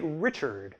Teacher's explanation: That final [ɹ] combined with the [ə] sound just before it makes a big old rhoticized schwa thing, [ɚ].